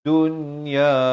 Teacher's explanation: Di sini izhar mutlak, nun mati walaupun bertemu ya, tetapi di sini jangan baca dengan masuk beserta dengung, tapi bacakan dengan jelas